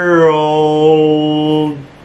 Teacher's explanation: الخطوة الأولى وبعدين نروح نجيب الأو نقول ورو, واحنا بقى بنقول الأو بناخد معاها الإل بتكون دارك إل, فنقول world كده.